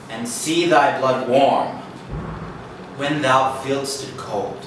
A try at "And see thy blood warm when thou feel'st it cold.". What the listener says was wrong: Don't rush to when thou feelst it cold. Do a real dramatic suspension after blood warm.